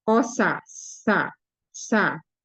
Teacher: mengalir suara dan mengalir udara dan termasuk huruf istifal